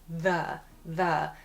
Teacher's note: The other sound, though, with “TH,” is something we hear in a word like, ‘the’, ‘the’, so the tongue is actually, like, just touching the back of my teeth. “The,” or maybe like the back of my teeth and the top of my mouth a little bit, the way that the sound is produced is a little bit different.